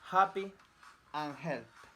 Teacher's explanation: The consonant h. The sound Place of articulation, glottal. Manner of articulation, fricative. Voicing, voiceless.